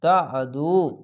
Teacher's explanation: তা আদু, পেশার পাশে অসাকিন এক আলিফ টেনে পড়বেন, আইনটিকে মোটা করে গলা চিপে পড়বেন